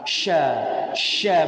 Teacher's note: sya satu-satunya huruf yang memiliki sifat tafashi. Apa arti tafashi? Tersebarnya udara di dalam mulut.